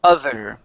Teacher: we have the voiced th which is this th of other that's the voiced it has the vibration in the throat as well as the vibration in the front of the mouth